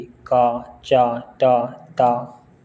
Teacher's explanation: जिन व्यंजन के उच्चारण में कम प्राण या वायु प्रयुक्त होती है उन्हें अल्पप्राण व्यंजन कहते हैं।